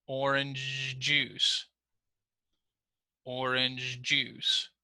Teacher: sometimes we also hold the consonant sound so especially that ch sound and that j sound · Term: blending